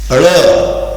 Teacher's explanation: तो हमारे जो है ड़, जीभ को पीछे तरफ करके ड़ निकलता है तालू में लगा के